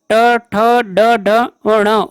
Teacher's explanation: मूर्धा और जीभ के स्पर्श वाले वर्ण मूर्धन्य कहलाते हैं